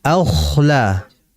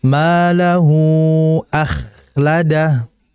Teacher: Kemudian berikutnya akhladah, huruf kha. Jadi huruf kha ini bersifat mengalir. Kemudian dia huruf yang bersifat hamas, berdesis. Bahkan dia juga bersifat tafkhim, yaitu tebal. Sehingga dibaca akhla.